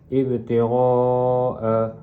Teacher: Ibtiah a mad wajib muttasil kerana huruf mad alif bertemu dengan huruf hamzah dalam satu kalimah maka perlu dibaca dengan panjang empat atau lima harakat · ba itu qalqalah sughra, perlu dibaca dengan lantunan sedikit